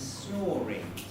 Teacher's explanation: the linking r appears within a word it's absolutely obligatory